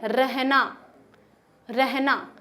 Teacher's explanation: लुंठित का मतलब होता है थोड़ी सी कांपती हुई आवाज, ठीक है, कंपन, यानी कांपती हुई, मान लीजिए कंपन हो रहा है।